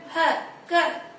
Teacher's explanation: इन सबका उच्चारण स्थान होता है कंठ। ह क, सारी आवाज कंठ से आ रही है